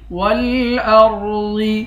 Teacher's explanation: را اور ضاد دونوں کو موٹا پڑھیں گے